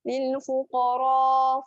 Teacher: Yang ni dua-dua tebal. Qaf tebal, ra pun tebal. Jadi kat sini kena angkat lidah.